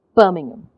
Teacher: if you have a lot of unstressed syllables in between then you tend to swallow them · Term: stress time language